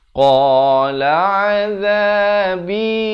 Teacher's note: Qala qa makhrajnya di pangkal lidah.